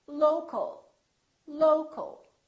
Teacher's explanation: we reduce the second syllable and it becomes the uh